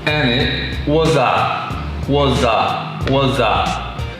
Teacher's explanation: the S sounds a little bit more like a Z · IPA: /wə sə/